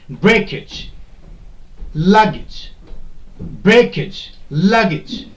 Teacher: Okay, like we have, the word is breakage. If your suffix is this age, then the stress will be put on the first syllable, break.